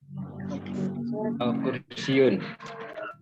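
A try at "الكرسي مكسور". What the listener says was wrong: Kalau udah pakai alif lam berarti nggak boleh pakai tanwin. Al-kursiyu.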